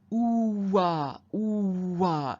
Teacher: Similarly with ooh-wah, ooh-wah, you can hear how a w sound has appeared in there